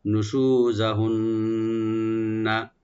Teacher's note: নুন মোসাদ্দেদ এখানে একালে গুন্না করে আমরা পড়ব, কিন্তু এখানে টান হবে না, শুধু গুন্না হবে